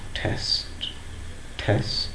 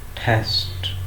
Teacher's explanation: Similarly, in words such as test, the first is aspirated: test, test. we can release the strong puff of air from the mouth. Test. While the second T is not pronounced with aspiration, it is unaspirated.